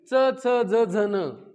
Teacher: तालव्य च च ज झ न यांचा उच्चार म्हणून टाळूला लागून होतो